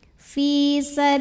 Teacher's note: karena ada baris fathah tegak di atas huruf lam maka bacanya panjang 2 harokat